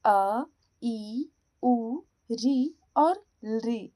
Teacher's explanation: जिन स्वरों का उच्चारण करने में एक मात्रा का समय लगे उसे हम ह्रस्व स्वर कहते हैं